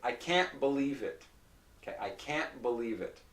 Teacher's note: if you notice there's no T it's just a glottal stop and this part is nasalized can't okay now this part is always nasalized even if there's